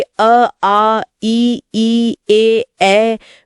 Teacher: में होठ गोल नहीं होते। वे फैले रहते हैं। इन्हें अवृत्तमुखी कहा गया है।